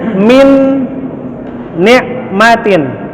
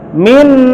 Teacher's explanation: Tetap dia masuk nun, hukum hurufnya idgham bi gunnah. Nun mati ketemu nun, maka nunnya masuk ke nun. Ya, sama dia juga, tetapi dengan gunnah.